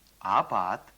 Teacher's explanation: п произносится почти как б только немного глуше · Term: озвончение